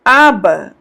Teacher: O último A, ele é um pouco mais alongado, mas veja que é algo muito tênue, né? Aba, muito tênue.